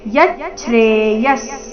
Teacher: ಯ ನಂತರ ಅರ್ಧ ಚ ಇದೆ ಇದೆ ಮುಂದೆ ಛ್ರೆ ಇದೆ ಯಚ್ಚೇಯಸ್ ವಿಸರ್ಗದ ಉಚ್ಚಾರಣೆ ಅರ್ಧ ಸ ರೀತಿ ಯಚ್ಚ್ರೇ